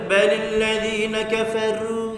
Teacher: Ru nipis jadinya kalau kita baca biasa-biasa. Kena tebalkan. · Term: ru tafkhim